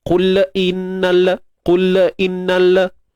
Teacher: untuk lam kita matikan dia dan jelaskan tanpa tawallud. Jelaskan lam, tapi jangan kita beranakkan.